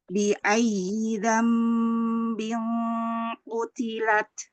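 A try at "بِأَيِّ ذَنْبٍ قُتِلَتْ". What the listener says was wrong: Ahsan.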